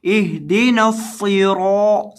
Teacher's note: ما، اهدنا الصراط المستقیم، کیا پڑھنا ہے اس کو؟ اهدنا الصراط، صاد کو موٹا کرنا ہے، اس کے اندر سیٹی کی آواز پیدا کرنی